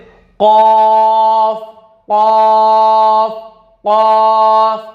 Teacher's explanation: तालू के नरम हिस्से से कॉफ कॉफ कॉफ अदा होता है, बड़ी काफ भी जिसको कहते हैं, यहां से अदा कॉफ।